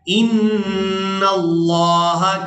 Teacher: نون مشدد اور میم مشدد پر ہمیشہ ہی غنہ کیا جاتا ہے، یعنی نون کی آواز کو ناک کے بانسے سے ادا کیا جاتا ہے۔ تو یہاں ہم نے نون پر غنہ کرنا ہے۔